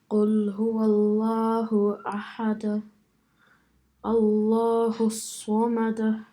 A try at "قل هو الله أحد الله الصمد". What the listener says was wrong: You're saying the qalqala a bit too much. Don't make it sound like a fatha. It's like a samada, because that's not a fatha. It's just a slight echo sound. Samad.